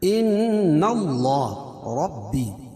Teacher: ان نون مشدد اس میں غنہ ہوگا